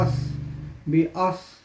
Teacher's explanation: صاد جو ہے یہ حروف مستعلیہ میں سے ہے، اس کو پر پڑھیں گے